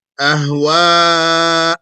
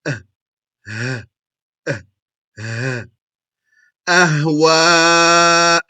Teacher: Those two letters both come from the same general spot in the throat, which is the lower throat.